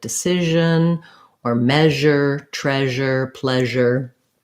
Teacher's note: My tongue is back and my mouth is open, so a lot of air can come out. The sh and zh sounds have the same mouth position. The zh sound just has my voice on.